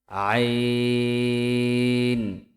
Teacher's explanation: কন্ঠনালীর মধ্যখান হইতে উচ্চারিত হয় আইন।